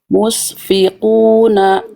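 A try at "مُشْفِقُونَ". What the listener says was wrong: Belum dapat, dikit lagi shinnya. Itu bunyi shin, Bunda.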